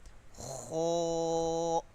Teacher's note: kho, from upper part of the throat, heavy.